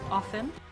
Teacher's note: notice that I use that t in the word often that sometimes pops up in a Jersey accent